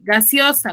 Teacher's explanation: Tiene 2 vocales abiertas. La E con la O se separan. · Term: hiato